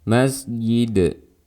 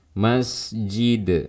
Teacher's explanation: mengubahnya menjadi suara Iya seperti ini suaranya terdengar ada suara ya di situ